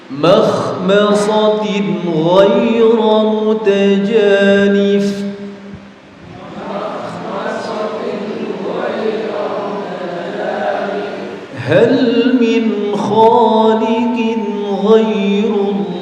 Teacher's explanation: Baik, berikutnya adalah nun sukun atau tanwin bertemu dengan huruf ghain ya. Nun sukun atau tanwin bertemu dengan huruf ghain masih masuk dalam kategori bacaan idhar halqi, berarti harus dibaca jelas.